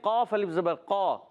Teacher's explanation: قاف ادا ہوتے ہیں زبان کی جڑ اور تالو کا نرم حصہ، قاف کا مخرج ہے